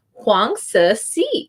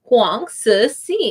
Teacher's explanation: So you don't pronounce the N.